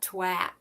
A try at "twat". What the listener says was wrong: You don't pronounce the A.